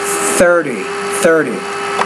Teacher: that is an interdental consonant get that tongue kind of between the teeth